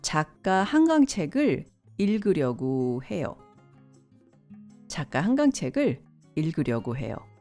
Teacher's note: But more colloquially, you can pronounce 고 as 구.